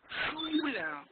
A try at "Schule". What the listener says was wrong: Ich möchte, dass deine Lippen noch mehr zusammenkommen. I want your lips more close,